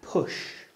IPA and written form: pʊʆ (push)